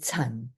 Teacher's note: just falling down into the basement, fourth low falling